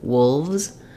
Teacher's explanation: the letter S is going to say the Z sound, the Z sound, because these are voiced